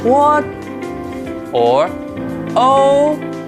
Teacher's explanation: the first tone is a relatively high tone.